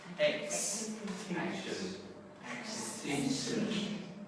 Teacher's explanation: So lots of stress here on the X.